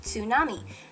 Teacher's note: it's pronounced with a little t at the beginning of it